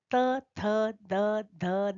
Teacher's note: हमारी जीभ हमारे दांतों का स्पर्श करती है और वहां से वायु बाहर निकलती है तब ये वर्ण उच्चरित होते हैं